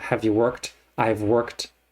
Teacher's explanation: the auxiliary have or has is not really pronounced is in the background